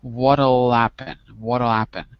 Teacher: the h is almost not there